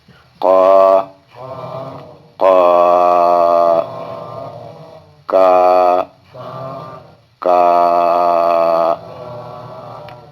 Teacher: اب یہ زبان کی جڑ اور کوے سے یہ دو حرف ادا ہوں گے